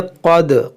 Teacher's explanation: क़ाफ मोटा करेंगे, दाल में क़लक़ला होगा